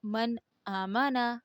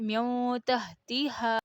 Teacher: اظہار صاف بغیر ناک کے آواز میں پڑھنا اور ہے اخفا ہے ناک کی آواز کے ساتھ پڑھنا